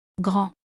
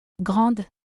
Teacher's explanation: this adjective big and when the noun is masculine and singular we pronunciate it like this gr the letter d at the end is silent but when when the noun is feminine and singular we add the letter e at the end and we pronunciate it like this grand here the letter d is pronounced.